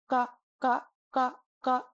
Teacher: So this ga ga ga ga is an extraordinarily soft, completely non-aspirated K sound, almost a G sound